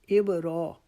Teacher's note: اب یہاں پہ ہم نے ابراہیم نہیں پڑھنا، اب را کو بھی ایک الف کے جتنا لمبا کھینچیں گے